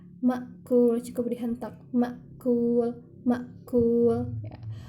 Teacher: Makul itu hamzah sukun. Jadi dia tidak ditekan. Makul cukup dihentak.